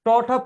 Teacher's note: দেখবেন জিভের ডগাটা একেবারে তালুর মাঝ বরাবর বাড়ি খাচ্ছে, দ্যাট ইজ এটা মূর্ধন্য ধ্বনি